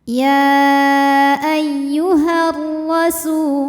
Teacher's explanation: pertama dilepaskan ya ayyuh Alif lamnya dinamakan dengan alif lam syamsiah karena alif lam menghadapi huru huruf Syamsiah yaitu huruf ro maka alif lam tidak kita baca atau biasa disebut dengan Idgham Syamsi ya ayyuhar rasu rnya dibunyikan